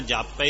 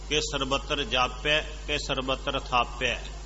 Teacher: ਪੱਪੇ ਨੂੰ ਥੋੜੀ ਜਿਹੀ ਸਿਹਾਰੀ ਬੋਲਦੀ ਹੈ, ਲਘੂ ਮਾਤਰਾ ਹੈ, ਦੀਰਘ ਨਹੀਂ ਹੈ। ਇਸ ਕਰਕੇ ਇਸ ਤਰ੍ਹਾਂ ਇਹ ਬੋਲਦੀ ਹੈ, ਇਹਦੇ ਵਿੱਚ ਬੋਲੇਗੀ ਇਹ ਕਿ ਸਰਬੱਤਰ ਜਾਪਿਆ ਕਿ ਸਰਬੱਤਰ ਥਾਪਿਆ।